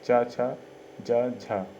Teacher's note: चा वर्ग के व्यंजन आते हैं वह तालव्य से बोले जाते हैं